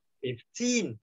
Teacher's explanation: Đấy mình đánh thằng nhấn thằng kia xuống, nhấn vào thằng phịp xuống, thằng trọng âm nó rơi vào âm hai.